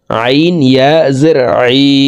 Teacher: হালকের মধ্যখান থেকে চাপ দিয়ে আইন হরফের উচ্চারণ করব